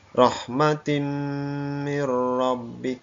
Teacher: Ada tak kasrot a di sini, tanwin bertemu dengan huruf mim. Maka suara tanwinnya hilang atau bunyi tanwinnya hilang, masuk dalam huruf mim di depannya. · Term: idgham bil gunnah